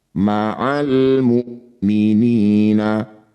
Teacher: hamzah punya sifat syiddah tertahan.